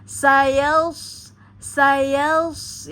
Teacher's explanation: karena dia sifatnya tebal kemudian isti'la, jadi suara mengepung di bawah mulut, ya, di dalam mulut